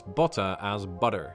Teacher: the letter T is pronounced as a D in the middle of words is known as T flapping